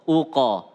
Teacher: kalau qaf itu qalqalahnya lebih ke arah o, uqa, bukan uke ya, uqa.